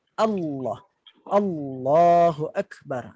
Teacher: Tapi kalau lam yang tebal, Allah, bila sebut Allah, sama juga. Bahagian permukaan dan tepi bahagian lidah itu dekat dalam langit atas, dan bahagian pangkal lidah juga naik. Seolah-olah di tengah itu ada lekukan.